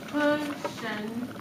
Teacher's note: Cushioned I know is stressed, unstressed.